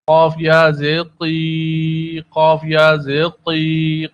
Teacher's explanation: قاف ہمارے ٹارگیٹڈ حروف میں سے زبان کی جڑ قوے سے متصل حصے پہ لگنے سے اس حرف کی ادائیگی ہوتی ہے. قاف حروف مستعلیہ میں سے پر پڑا جاتا ہے، موٹا پڑا جاتا ہے